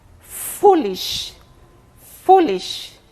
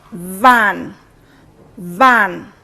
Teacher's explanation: You notice that the lower lip is in contact with the upper teeth. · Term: labiodentals